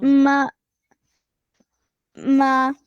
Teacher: oh, ما ما Yeah, meme has fatha next to its alif with the small mud. So ma will be stretched for 2 seconds.